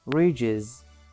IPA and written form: rɪʤɪz (ridges)